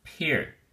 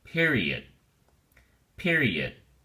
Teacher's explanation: The academic word period has 3 syllables, and the emphasis or stress is on the first syllable, peer. Peer. Don't say pair, say peer.